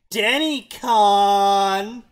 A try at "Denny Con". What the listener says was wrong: There is no O in that. There's no O present. You said con. I would have accepted con. But no, you went with con.